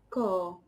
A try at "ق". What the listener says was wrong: yeah, qa. It's not ka. It's not k. It's qa.